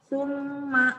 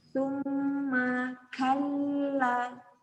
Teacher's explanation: Summa, mimnya bertasjid. Summa, ditekan ditahan.